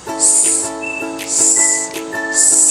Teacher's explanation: Ito ay kung saan ang hangin ay dumadaan sa isang makipot na daanan kaya nagdudulot ng pakiskis na ingay tulad ng s. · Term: fricative